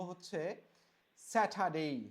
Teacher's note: ট এর উচ্চারণটা এখন হয়ে গেছে ঠ এর মতো। তো আগে ছিল স্যাটারডে, এখন আমরা বলবো হচ্ছে স্যাটারডে।